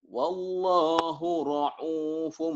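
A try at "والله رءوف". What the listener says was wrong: Ra'u, jangan ra'u, jangan ga'ain. Kalau a'udhu a'in, ini alif hamzah. Wallahu ra'u, usra, unyil.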